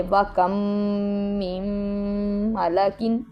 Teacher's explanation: پہلی میم کو دوسری میم میں مدغم کر دیں گے، ملا دیں گے، اور اسے ادغام شفوی کہتے ہیں، اور ادھر ہم غنہ کریں گے